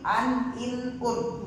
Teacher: di setiap tanwin an in un ada nun yang terucap